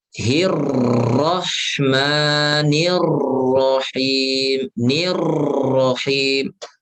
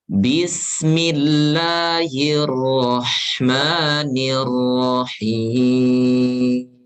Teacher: jangan sampai menimbulkan getaran yang kedua, yang ketiga. Tapi oro hanya sekali getaran.